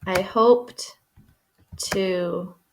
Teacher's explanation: So even though it's a D and it's a T, really it's a repetition of that T sound.